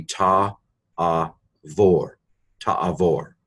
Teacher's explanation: Modern Hebrew pronounces a bait without a dagesh as a V sound.